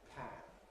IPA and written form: pʰæn (pan)